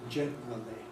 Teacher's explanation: There are different choices for the missing schwa, which I would not recommend you to use after the n, but I say you can use after the r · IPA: [ˡʤenrəli]